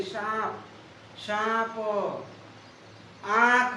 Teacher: अनुनासिक में नाक और मुख दोनों से हवा निकलती है।